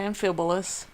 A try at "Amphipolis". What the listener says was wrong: Amphipolis. Amphipolis. Amphipolis. You said Amphibolus. With a B.